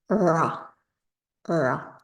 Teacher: I kind of think of it like an American R, but then you bring your tongue further back. So it becomes ra, ra. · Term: retroflex ra